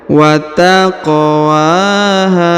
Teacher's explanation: di depannya terdapat Alif Wat taqwaha huruf qaf dipantulkan atau diqalqalahkan karena berharakat sukun ya wat taqwaha kemudian huruf ha yang di ujung dipanjangkan dua